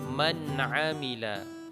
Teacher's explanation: karena ain merupakan huruf izhar, maka hukum bacaannya izhar dan dibaca secara jelas dan terang, artinya tidak berdengung.